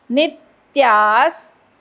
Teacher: नी वरती आघात कारण पुढे जोडाक्षर